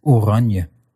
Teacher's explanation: an n before a y sound turns into ny, as in oranje.